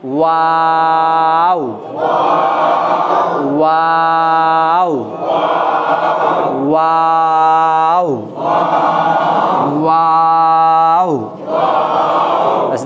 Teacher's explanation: বাস দেখেন তাহলে এই অক্ষরটা উচ্চারণ করতে গেলে প্রথমে ঠোঁট দুটি গোল, মাঝে লম্বা, শেষে আবার গোল এবং উচ্চারণটাকে লম্বা করতে হবে